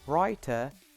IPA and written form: raɪtə (writer)